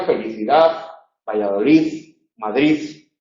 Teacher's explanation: la D, cuando se relaja mucho, se confunde con la Z.